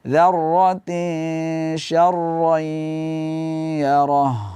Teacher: Ha di ujung ayat harus ada getar suaranya. Roh, jangan angin saja.